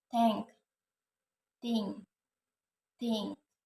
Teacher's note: Voiceless dental fricative sound